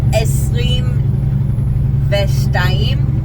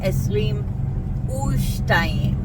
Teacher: the vav that normally sounds like ve and means and, changes to an oo sound before any of the letters that make up the made-up word boomaf, which are bet, vav, mem, and pei, or before a word that starts with a letter that has a schwa under it.